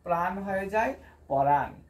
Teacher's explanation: একটা স্বরধ্বনি এসে ব্যঞ্জন ধ্বনিটাকে কি করে দেয় বিশ্লেষণ করে দেয় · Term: বিপ্রকর্ষ